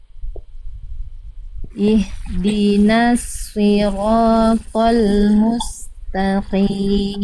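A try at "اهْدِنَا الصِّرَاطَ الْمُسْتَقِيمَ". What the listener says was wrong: Oke Bunda, ini tebalkan lagi sedikit. Kalau kurang tebal kayak tadi jadinya huruf sin nanti. Jadi bisa jadi kesalahan besar.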